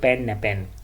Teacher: प जो होता है जब किसी लफ्ज़ के शुरू में इस्तेमाल होती है तो ये एस्पिरेटेड होगी, यानी इसको फ पढ़ा जाएगा।